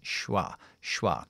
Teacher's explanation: pero yo lo voy a debilitar porque es un verbo auxiliar lo voy a dejar en shua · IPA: ʃə